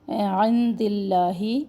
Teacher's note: عند اللہ دال کے نیچے زیر ہے تو اس میں جالہ کو ہم باریک پڑھیں گے